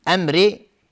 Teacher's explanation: امری میم ساکنش را اظهار شفوی. را اینجا ترقیق است چون کسره داره